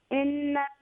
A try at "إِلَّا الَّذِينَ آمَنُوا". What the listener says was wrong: You're changing a word. It's not innal ladhina. It's illa ladhina. Illa ladhina.